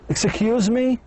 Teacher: The voice goes up in the questions.